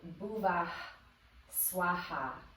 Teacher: that H sound has a little bit of an aspirated breath that comes afterwards